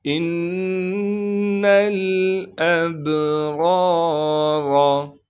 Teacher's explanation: با پر قلقلہ کیا جائے گا یعنی با پر آواز کو ہلائیں گے